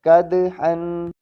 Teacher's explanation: کاف زبر دال، قد، حا دو زبر حن، قدحن۔ دال بھی ہلا کر پڑھا جائے گا